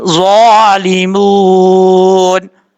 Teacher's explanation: ظالی, ظا حروف مستعلیہ پر پڑھیں گے, ظالمون. میم کے بعد واو مدہ ایک الف کی مقدار لمبا کر کے پڑھا جائے گا. اس کے بعد ہے نون کے اوپر زبر, جب یہاں پہ وقف کریں گے تو نون ساکن ہوگا.